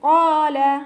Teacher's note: ഖാഫ് heavy ആക്കിയിട്ട് ഉച്ചരിക്കുക കേട്ടോ. ഇസ്തിഅലാൻ്റെ letter ആണല്ലോ, ഉയർത്തിയിട്ട് ഉച്ചരിക്കുക. നാവിൻ്റെ ബാക്ക് നന്നായിട്ട് മുകളിലേക്ക് പൊക്കി കൊടുക്കുക.